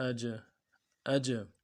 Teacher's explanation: حمزہ جیم زبر اج، اج، جنبش دینا ہے حرکت کو، یعنی آواز واپس لوٹے گی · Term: قلقلہ